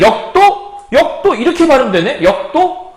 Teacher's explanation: 그러니까 기역이라고 하는 이거 파열음이에요. 기역이라고 하는 이 파열음 뒤에 디귿이 왔을 때 얘가 쌍디귿이 되더라. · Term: 된소리 되기